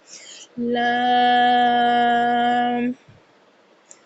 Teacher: زبان کا کنارہ اور دونوں دانتوں کی جڑ کے تالو کی جانب والے حصے سے ادائیگی کی جاتی ہے